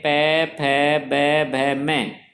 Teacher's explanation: जब पै वर्ग के व्यंजनों का उच्चारण करते हैं पै फ ब भ म, तब हमारे होंठ आपस में मिलते हैं, तब उन्हें ओष्ठ व्यंजन कहा जाता है